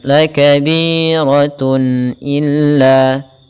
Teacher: Misalkan ada huruf ban dengan tanwin, itu sama dengan nun ban dengan nun yang dimatikan. Maka suara tanwin itu suara nun, harus ditampakkan dengan jelas. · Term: izhar halqi